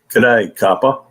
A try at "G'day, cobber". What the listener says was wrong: No, not a copper. A B for Cobber. Cobb. COBBE. It's got a bit more of an R there.